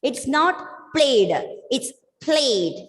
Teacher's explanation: You start the word with the plosive pa and just bring a soft la sound there. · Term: L sound